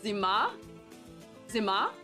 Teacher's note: actually pronounced with the emphasis on the last syllable